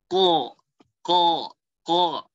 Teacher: Jadi pangkal lidah tuh kayak naik dia. Pangkal lidah paling belakang tuh naik. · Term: huruf qaf